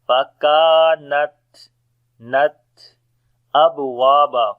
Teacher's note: on the ba we make qalqala.